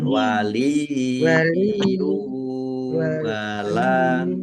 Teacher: Mat silah kosiroh dibaca panjang 2 harokat sama dengan mat tobi'i. Waliyu, ya tasdid yang didahului dengan kasroh, ini namanya mat tamkin. Mat tamkin ditahan, ya.